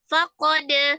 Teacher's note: dal sukun di tengah qalqalah sughra ya, dipantulkan